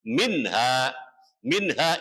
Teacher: ada nun sukun atau nun mati bertemu dengan huruf ha, hukumnya dibaca idhar. Idhar artinya jelas atau terang